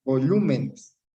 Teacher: Nes, primera, me, segunda, lu, tercera sílaba tónica, se tilda. Volúmenes. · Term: esdrújulas